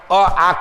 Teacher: अ आ कंठ से निकलता है, दोनों सवर्णी हैं, दोनों मिलकर के अपना बड़ा रूप आ ले लेंगे।